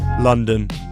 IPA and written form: ˈlʌndən (London)